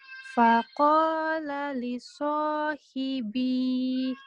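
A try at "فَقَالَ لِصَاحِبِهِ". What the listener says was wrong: Kenapa panjang? Iya, enggak panjang. Jangan dipanjang ya. Iya, pendek.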